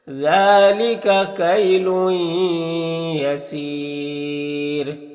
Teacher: یا ہے حروف یوبن میں سے تو ادغام ناقص ہوگا اور یہاں پر وقف کریں گے تو را کو باریک پڑھیں گے اور مد عارض وقفی ہوگا